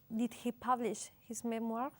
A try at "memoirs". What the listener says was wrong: Memoirs. La R ni se oye. Memoirs. the French pronunciation of memorias. We don't say memories. Memories son recuerdos.